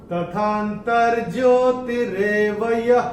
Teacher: य के साथ जो विसर्ग आ रहा है चरण की समाप्ति पे, तो इसका उच्चारण केवल और केवल ह ही होगा